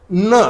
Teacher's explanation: आपली जी जीभ आहे वर टाळूला लागली पाहिजे, दाताच्या थोडीशी वर, बरोबर, न अशा पद्धतीने.